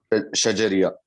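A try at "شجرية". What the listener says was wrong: Exactly, हुर्फे शजरिया।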